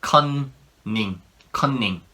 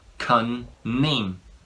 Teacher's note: When there's two N's in one word, Koreans tend to pronounce it like all the N's in each syllable.